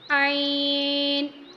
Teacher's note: درمیانی حلق سے عین ادا ہوگا